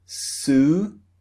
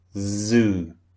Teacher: can feel the difference in the voiced and the unvoiced sound so unvoiced is the first sound voiced is z the second sound